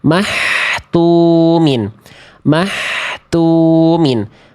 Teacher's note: Mah terlalu lembut. Terlalu ke tengah tenggorokan. Jadinya terlalu clean. Kho itu enggak se-clean itu. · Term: H kecil